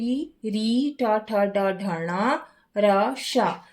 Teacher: इन वर्णों का उच्चारण मूर्धा स्थान से होता है।